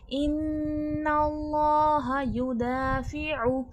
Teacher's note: عین کا مخرج ہے وسط الحلق